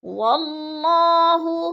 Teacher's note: اللہ سے پہلے لفظ واو کے اوپر زبر ہے تو اللہ کو پر کر کے پڑھیں گے